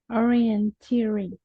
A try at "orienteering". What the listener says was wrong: Yes, good.